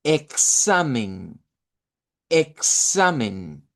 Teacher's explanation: la X suena como k con s y en el español la solemos hacer así también